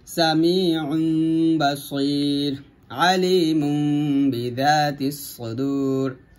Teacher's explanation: নুন সেকেন্ড ও তানবিনের পর বা হরফ আসিলে তখন নুন সাকিন ও তানবিনকে মিম দ্বারা বদল করিয়া গুণনা সহিত পড়িতে হয়, অর্থাৎ এখানে নুন সাকিনের জায়গায় পড়তে হবে মিম সাকিন করে। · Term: ইকলাব গুণনা